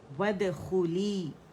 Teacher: و باریکی سے پڑھا جائے گا، ہونٹوں کی گولائی سے